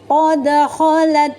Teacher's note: Kha ini keluarnya dari adnal halqi. Adnal halqi, dia semahraj dengan huruf ghain. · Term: huruf kha